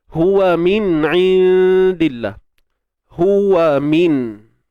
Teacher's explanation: kat sini nun mati bertemu huruf ain. Hukumnya izhar halqi.